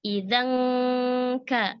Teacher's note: Jadi langsung ke makhrajnya huruf kaf, langsung nempel ya. Idzan ka, dan bunyi gunnahnya tipis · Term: ikhfa haqiqi